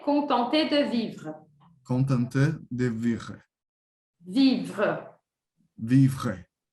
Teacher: o E do final a gente não pronuncia, como se ele não existisse